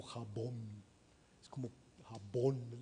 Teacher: no es una B fricativizada, ¿no? Sino es plena la B